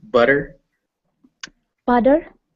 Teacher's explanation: your t's still sound much like t's and not enough like a d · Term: d sounds